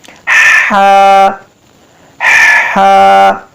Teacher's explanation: یہ وسطی حلق سے ادا ہو رہا ہے